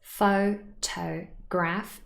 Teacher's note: 3 syllables, photograph, and the stress is on the first syllable